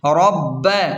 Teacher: رب زبر رب زبر ب، رب، با پر شد ہے تو اسے سختی کے ساتھ را کو ملا کر پڑھیں گے